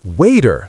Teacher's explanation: Many people say water, but in American English, we often say waiter, soft T sound.